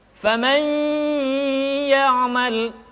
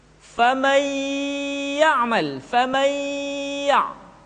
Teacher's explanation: Ditahan, tidak boleh tergesa-gesa, dan dimasukkan ke hidung. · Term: gunnah